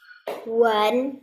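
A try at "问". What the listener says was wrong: Wen. Bukan wan tapi wen.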